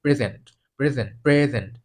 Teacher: আর যদি নাউন হিসেবে ব্যবহার করতে প্রেজেন্ট তাহলে প্রথম অংশটাকে জোর দিতে হবে। তখন এটার মানে হবে উপহার। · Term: স্ট্রেস